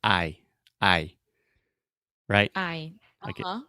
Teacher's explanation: you're starting with kind of an ah ah sound and then you're going to the e e so I'm saying IE but when I say that fast I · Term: moving vowels